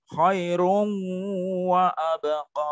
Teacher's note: Nah, jadi ada berdengungnya di situ. Jadi nonnya hilang, masuk ke wawu, masuk idgham bi gunnah dengan mendengung.